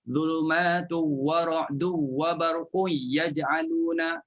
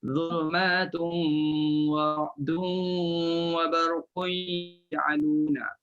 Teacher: baca khalaf kerana tak dengung pada tanwin bertemu waw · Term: tak berdengung